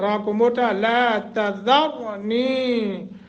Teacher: را ساکن ما قبل فتح ہے، اس فتح کی وجہ سے را کو موٹا کریں گے